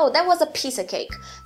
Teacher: Então, a, artigo baixo, piece, palavra de conteúdo forte, of, que é a preposição, se torna um schwa aqui, você nem precisa falar of, você pode falar a, e cake volta a ser acentuado.